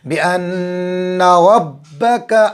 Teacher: آگے چلو، با کے نیچے زیر ہے، بی ان ربک، را بھی پر کریں گے اور نون پر تشدید ہے، گنہ کریں گے